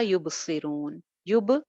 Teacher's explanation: با پہ آواز باؤنس بیک کرے گی، قلقلہ ہو جائے گا